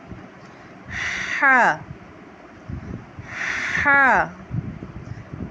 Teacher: اس کی ادائیگی ہم حلق سے کرتے ہیں۔ ہا ہا، ہا کو ایک الف کے برابر کھینچ کے پڑھتے ہیں۔